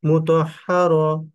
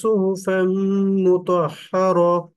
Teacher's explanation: গোলতার উপরে সর্ব অবস্থায় সাকিন হয়ে যাবে এবং হা উচ্চারণ করে পড়তে হবে।